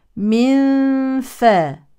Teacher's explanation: نون ساكنه يليها فاء يعني اخفاء حقيقي